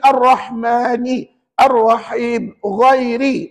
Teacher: makhrajnya belakang hujung lidah dilengkungkan ke gusi hadapan sebelah atas, dan ra itu ada satu sifat yang tak ada pada huruf lain dalam Quran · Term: huruf ra